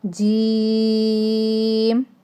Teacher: मीम की जो sound है लास्ट पे वो हिलनी नहीं चाहिए। मीम को साकिन कर देना है और लंबा भी नहीं करना है।